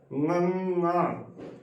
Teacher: ਗੰ ਜਦੋਂ ਅਸੀਂ ਗੰ ਬੋਲਦੇ ਹਾਂ ਤਾਂ ਜੋ ਸਾਡੀ ਜੀਭ ਹੈ ਉਹ ਉੱਪਰ ਤਾਲੂਏ ਨੂੰ ਟੱਚ ਹੁੰਦੀ ਹੈ ਤੇ ਸਾਡੇ ਮੂੰਹ ਦੀ ਆਵਾਜ਼ ਬੰਦ ਹੋ ਜਾਂਦੀ ਹੈ ਤੇ ਆਵਾਜ਼ ਉਹ ਨੱਕ ਰਾਹੀਂ ਬਾਹਰ ਆਉਂਦੀ ਹੈ। ਗੰਗ ਜਦੋਂ ਗ ਬੋਲਣਾ ਹੈ ਉਦੋਂ ਜੀਭ ਤਾਲੂਏ ਤੋਂ ਨਿੱਚੇ ਹੋ ਜਾਂਦੀ ਹੈ ਤੇ ਆਵਾਜ਼ ਫਿਰ ਮੂੰਹ ਰਾਹੀਂ ਬਾਹਰ ਆਉਂਦੀ ਹੈ।